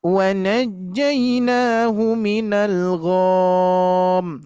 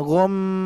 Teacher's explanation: Di sini tidak ada mad, tapi M-nya yang harus ditahan gham gitu ya.